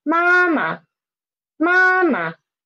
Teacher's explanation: the neutral tone one is lower